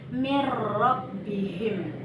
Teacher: Idgham bila gunnah artinya apabila nun mati atau tanwin bertemu dengan huruf lam dan ro, maka harus dibaca lebur tanpa dengung. Misalnya, kata min bertemu dengan rabbihim, maka kita lebur bunyi nun mati kepada huruf ro sehingga menjadilah bacaannya mir-rabbihim.